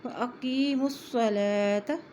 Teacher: لام کے اوپر کھڑی زبر ہے اس لیے ایک حرکت لمبا کریں گے